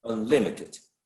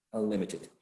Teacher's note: So since it doesn't attract the stress, it's not unlimited, it's unlimited. So second syllable should be the one bearing the stress.